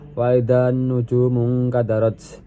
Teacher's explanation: an-nujum dibaca idgham syamsiah karena lam diidghamkan ke huruf nun